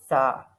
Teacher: سا کے کیس میں ہم اپنی زبان کی نوک کو اوپر والے 2 دانتوں کے جو کنارے ہیں نا، ایجز ہیں، ان کے ساتھ لگائیں گے، تب ادا ہوگا سا